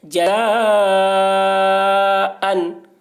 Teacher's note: جزا، اوپر مد، جزا، حمزہ دو زبر ان، حرف مد کے بعد حمزہ اسی کلمہ میں ہے، اس لیے مد متصل ہوا، مد متصل کو 3 یا 4 الف کے برابر کھینچ کر پڑھیں گے۔ جزاءً، حمزہ کے اوپر 2 زبر کی تنوین ہے، تنوین اور نون ساکن کی آواز یکساں ہوتی ہے۔